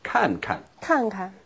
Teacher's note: when you have a verb repeated like this, the second verb is usually in the neutral tone